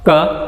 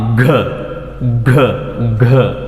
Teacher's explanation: Soft ಪ್ಯಾಲೆಟ್ ಏನಾಗಿ soft ಪ್ಯಾಲೆಟ್ ಮತ್ತು soft ಪ್ಯಾಲೆಟ್ raised ಪೊಸಿಷನಲ್ಲಿರುತ್ತೆ. So vocal ಕಾರ್ಡ್ಸ್ do not vibrate for ಕ, vibrate for ಘ ಘ ಘ